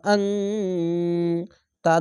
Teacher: নুন সাকিনের পাশে তা তার জন্য ইখফা গুন্না হচ্ছে বাংলা অনেস্কার মতো